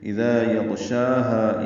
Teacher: مدہ ہے، یغشاها غین پر ہے اور اس پہ اظہار ہوگا، شین اور ہا دونوں کو دو دو حرکات لمبا کریں گے